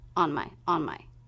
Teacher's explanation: Those two words will be really quick, low in pitch, and not too clear.